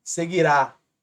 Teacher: Seguirá, última mais forte, oxítona